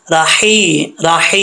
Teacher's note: ये हा बरीक है, इसका ताल्लुक हल्क से है, सीने की तरफ नहीं है।